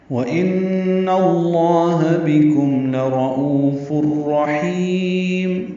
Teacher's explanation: وَإِنَّ میں نون مشدد پہ غنہ ، نون کی زبر کی وجہ سے لام اس میں جرالہ